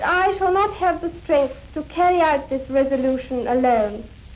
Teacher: all of the consonants for example all the final T's and K's are really beautifully produced